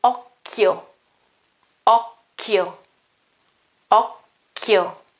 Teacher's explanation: the chi gets back to the pronunciation k